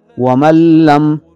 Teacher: نون ساکن کے بعد لام کی مثال ومن لم، اصل میں ہے ومن لم، چونکہ نون ساکن ہے، نون پر جزم ہے اور اس کے بعد لام آ رہا ہے، لہٰذا اس کو اس طرح ادغام کر کے پڑھیں گے کہ نون ساکن کی آواز غننے والی پیدا نہ ہو اور ادغام کامل ہو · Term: ادغام بغیر غنہ